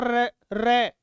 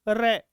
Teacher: रखना जीवा है वह कंपन करती है आप बोलोगे ना र तो जीभ आगे से कंपन करेगी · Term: लुंठित